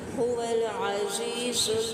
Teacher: زا سختی سے ادا کریں گے جبکہ یہاں پہ زی یا مدہ ہے